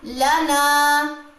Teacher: तो हमने लाम की ज़बर को लंबा नहीं करना, जबकि नून की ज़बर लंबी होगी इस अलिफ की वजह से। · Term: अलिफ मद